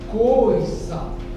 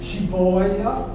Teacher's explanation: É, coisa fechada e boia aberta